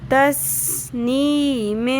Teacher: سین میں سیٹی کی آواز نہیں آ رہی سیٹی کی آواز نکالیں